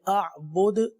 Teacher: آخر میں دال ساکن ہے، قلقلہ ادا کیا جائے گا۔